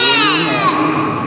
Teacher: اس میں زال نہیں ہے، سیٹی بند نہیں کرنی. یہ را والا زا ہے، یہ را والا اس میں سیٹی دینی ہے.